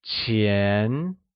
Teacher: is pronounced with the mid rising tone